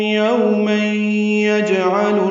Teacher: تنوین کے بعد یا آنے کی وجہ سے ادغام ہے. ادغام ناقص غنہ کریں گے. یوم یجعل میں پڑھیں گے اور آواز ناک کے بعد سے ملے جائیں گے.